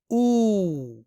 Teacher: यहाँ ये वाव हरफ मद है क्योंकि यहाँ पेश के बाद वाव साकिन है, यानी यहाँ इस वाव की आवाज को एक अलिफ के बराबर यानी 2 हरकत के बराबर लंबी करके पढ़नी है